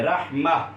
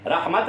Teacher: وقف کرنے کی صورت میں یہ جو ہے تا، یہ ہا میں کنورٹ ہو جائے گی، رحمہ، رحمت نہیں پڑھیں گے بلکہ رحمہ پڑھیں گے، یہ کس میں کنورٹ ہو جائے گی؟